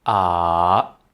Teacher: The third tone is diving. It falls down and then bounce back a little